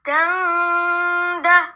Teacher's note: dengung yang lama. Antara 1,5 sampai 2 alif. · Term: Ikhfa hakiki